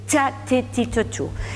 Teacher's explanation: La che, dice la Real Academia, es siempre oclusiva. En fricativa es un error.